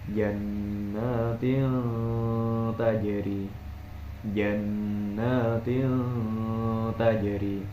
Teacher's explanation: ketika kasroh tain bertemu huruf ta, cara membacanya adalah dengan didengungkan